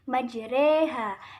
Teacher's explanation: hukum bacaan imalah adalah mencondongkan harokat fathah ke harokat kasroh